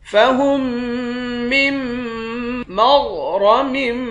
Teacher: मीम को गैन के साथ मिलाकर गैन और रा दोनों को मोटा पढ़ेंगे।